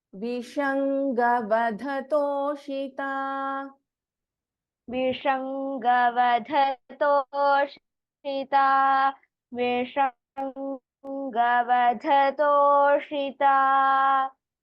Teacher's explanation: Vishanga Vadha. Dha is a Mahaprana. And in Vishanga, Sha is a Shanmukha Sha. And again in Toshita, Sha is a Shanmukha Sha.